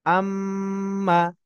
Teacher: আমার গুন্না এর পরিমাণ যেন এক আলিফ মদের পরিমাণ হয়, অর্থাৎ এক আলিফ পরিমাণ গুন্না যেন হয়।